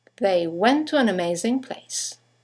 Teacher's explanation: 2 words, one ending with a T, the next one starting with a T, they run into each other